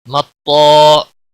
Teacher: مطا، طا اور الف دونوں موٹے پڑے جائیں گے۔ طا حروف مستعلیہ میں سے ہے، پر پڑا جائے گا۔